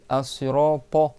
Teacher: c'est le bout de la langue qui va derrière les dents du haut et tu lèves un peu le reste de ta langue pour que ça prenne de la place dans ta bouche. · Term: ta emphatique